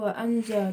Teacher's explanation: bacaan waanzalna termasuk ikhfa karena huruf nun sukun bertemu dengan Syaikh cara membacanya samar dengan dengung